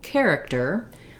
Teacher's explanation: we have first syllable stress. So the care syllable is stressed and the other two syllables are shorter and have reduced vowels. Because it's stressed, we have a clear vowel in that first syllable, and we have an unusual spelling where our CH sound says the C or K sound K.